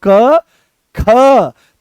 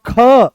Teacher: तो जैसे ही आप बोलोगे क तो बड़ी सरलता से निकल आया। पर जैसे ही बोलते हो आप ख तो जोर लगाना पड़ा।